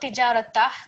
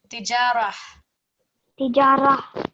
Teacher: So tijarah, not tijaratah, because remember we're not hearing the ta sound, it's replaced with the ha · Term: ha sound